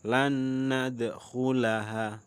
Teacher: Nun mati bertemu dengan nun. Bacanya lan nadkhulaha, berdengung.